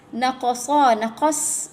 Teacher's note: Naqasa, naqas, ada sifat pada sad ya. Dah lah ditebal huruf itbaq, sifatnya hams dan safir ya